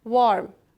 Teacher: Sababi uning yonida turgan r undosh harfimiz tilimizni tanglayimizni o'rtasiga olib borib tekkazmasdan r deb talaffuz qilganligimiz uchun biz a ni cho'zib talaffuz qila olmadik. Va buning yana asosiy sabablari u yopiq bo'g'imli holatda turganligidadir.